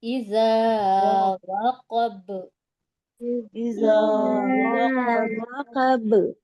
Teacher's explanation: यहाँ कलकला यहाँ होगा पे तो कलकला होगा, दोहरी आवाज आएगी, मखरज टक्कर खाकर